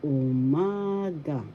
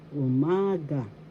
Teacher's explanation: The second syllable has the accent umaga.